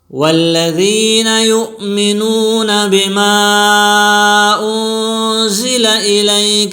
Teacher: والذین میں ذال باریک پڑی جائے گی